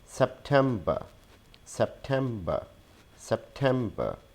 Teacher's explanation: We do not pronounce the last R sound. We add a schwa sound in the end.